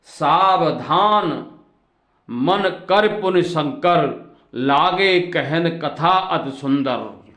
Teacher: इसमें जो सकार है वो तालव्य नहीं है, वो दंत्य सकार है।